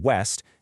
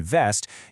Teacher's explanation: For the W sound, like in West, you make your lips round, almost like you're about to give someone a kiss. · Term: kiss versus bite